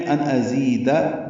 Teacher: ملانے کی صورت میں ان ازیدہ دال پر زبر ہے، لمبا نہیں کر سکتے